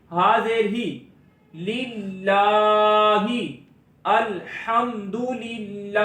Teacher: لام کھڑی زبر لا للہ. ہا کے نیچے زیر آواز کو نیچے گرائیں گے, اس کو کھینچ کر نہیں پڑھیں گے.